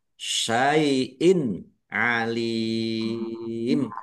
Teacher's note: Kasroh tanwin bertemu dengan huruf ain, bacaan izhar, dibaca jelas.